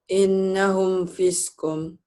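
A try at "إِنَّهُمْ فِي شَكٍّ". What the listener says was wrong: Fiskun. Pisak ya. Pesek mah lain. Tante itu. Pisak. Innahum pisak. Ya kol-kolannya jadi hilang, pisak.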